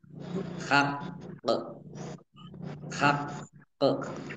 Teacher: berarti qofnya dibaca dogle Dua dan dipantulkan ya dibacanya Haq Haq jadi ditekan ya biar tampak dobel Q